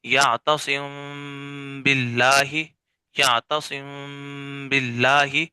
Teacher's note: ٹھیک ہے، تو با جو ہے وہ تری والے حصے سے ادا ہوتا ہے. تو چونکہ میم کے بعد با آ رہا ہے تو ہم نے غنہ بھی کرنا ہے تاکہ میم کا مخرج بھی ادا ہو جائے اور ہم نے جو ہے وہ پھر با کو بھی ادا کرنا تاکہ با کا مخرج بھی ادا ہو جائے.